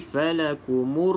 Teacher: Alif lam syamsiah, maka huruf lam ini kita tidak sebut ataupun tidak jelaskan di dalam bacaan